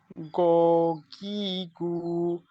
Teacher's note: গইন কে কন্ঠের শেষ ভাগ থেকে একটা গড়গড়ানি ভাব আসবে